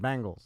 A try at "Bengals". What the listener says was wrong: No, you're saying Bengals bang, like bang, like Diamond Dallas Page, bang, self high five. That's Bengals. You're saying Bengals. It's Bengals. It's a Bengal. It's a Bengal. Bengals. It's not a bangle.